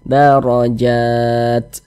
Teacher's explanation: ra memiliki tanda baca fathah, dibaca tafkhim, dibaca tebal lagi. Darajat. Jat, dibaca panjang.